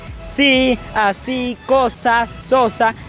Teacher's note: al momento de generar el sonido la lengua queda en la raíz de los dientes · La lengua queda en la raíz de los dientes al momento de decir sí, así, cosa, sosa. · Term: Alveolares